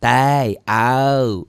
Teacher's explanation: kalau bahasa Indonesia lin itu kayak diptong. A dan I, A dan U, au.